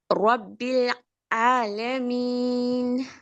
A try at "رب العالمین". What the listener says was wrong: Good حبیبتی، good. You're trying well. This is good.